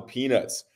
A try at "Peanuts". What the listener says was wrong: You said Peanuts. There was a T in there. The first pronunciation.